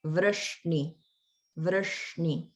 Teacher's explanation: in Vrashniyam, the shna is the retroflex like Vishnu. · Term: retroflex sounds